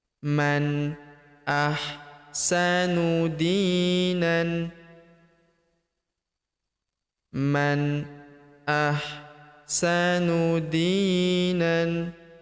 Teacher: Huruf nan tanwin an alifnya tidak dibaca atau dianggap tidak ada.